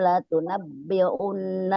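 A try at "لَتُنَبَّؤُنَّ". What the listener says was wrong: Latunabbaun bukan latunabbiun. Patah bukan kata.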